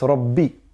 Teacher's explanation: Ra is thick and the ba carries a shadda, so we have to put emphasis on it.